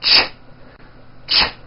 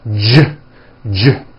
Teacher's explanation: if you take this CH sound and you keep everything in your mouth the same, you just add voicing, it becomes an American J sound